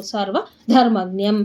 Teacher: ಧ ಮಹಾಪ್ರಾಣ ಒತ್ತಿ ಹೇಳ್ಬೇಕು.